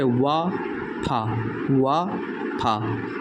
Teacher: तो इसके वजह से ये दोनों इस दंत ओष्ठ में आएंगे, मतलब दांत और ओठ को मिलाकर ये दोनों बनते हैं। जब हम बोलते हैं तो दांत और ओष्ठ में टच होता है, तो जिसकी वजह से ये दोनों अक्षर बनते हैं।